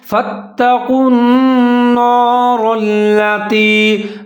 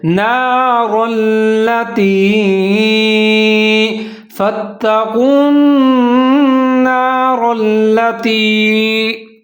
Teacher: وہ را کے پیچھے جو نون ہے اس کو بھی موٹا پڑھتے ہیں، وہ نہیں پڑھنا، اس کو باریک پڑھنا ہے